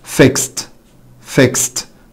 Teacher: طيب fixed fixed طبعا اخر صوت هنا س فبالتالي يجي ورا الاي دي نطق ت